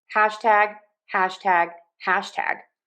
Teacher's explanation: So we have hash, hash, hash. If you were going to say hashtag, stress syllable number one, hash, unstressed tag